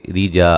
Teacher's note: را کو باریک پڑھیں گے، را کے نیچے زیر ہے۔ جا الف مدہ ہے، لن، یہاں نون تنوین کا باریک اخفا ہے۔